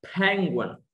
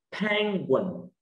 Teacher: Nếu bạn nhớ là cái dấu phẩy trên nhá, thì mình đọc lên như dấu sắc là penguin